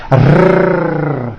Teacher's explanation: the R is produced by bringing the tongue forward in the front of the mouth, behind the upper teeth, and rolling or trilling the tongue